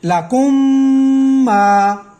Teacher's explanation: میم ساکن کے بعد میم متحرک آ گئی تو پھر ہم اس کو میم متحرک کے ساتھ ملا کر یہاں پر ہم اخفا کریں گے۔